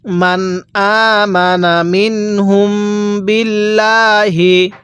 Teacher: মিম সাকিনের পরে বা থাকলে মিম সাকিনটা গুন্নাহ করে পড়তে হবে।